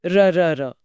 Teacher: र को लुंठित इसलिए कहते हैं क्योंकि इसे बोलने में जीभ का अगला सिरा लुढ़कता या कांपता है।